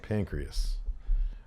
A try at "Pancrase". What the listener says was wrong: You looked up pancreas. Pancrase. S-E.